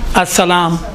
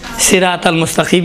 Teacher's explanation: سین میں سیٹی کی آواز نرم یعنی نازک ہے، صاد میں سیٹی کی آواز بھاری ہے